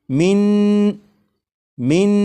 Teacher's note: یہاں پر جو آپ نے پڑھا من من، یعنی زبان تالو سے لگا کر پڑھا